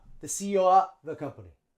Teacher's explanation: He's, contraction, the CEO the CEO. We just use schwa for of.